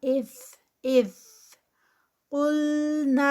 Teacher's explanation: یہاں پر ذال ہے، زا نہیں ہے، از نہیں کرنا